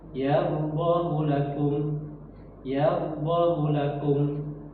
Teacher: Jadi tidak dibaca panjang ya dengan panjang ee dua harakat tapi cukup satu harakat aja. · Tetapi ya, ini di dalam riwayat Hafs an Asim, ya, ini hadomirnya ini tidak boleh dibaca panjang, tidak dibaca panjang. Jadi tidak dibaca panjang, ya, dengan panjang 2 harakat, tapi cukup 1 harakat saja.